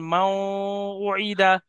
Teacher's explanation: নুন সাকিনকে ওয়াওয়ের সাথে মিলিয়ে একালিপ পরিমাণ গুণনা করে পড়তে হবে, একে ঈদগামে নাকিস বলা হয়, যেমন মাও উইদা।